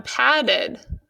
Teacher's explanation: The final sound in the root word pad is a D. So again, the ED is saying the sound id.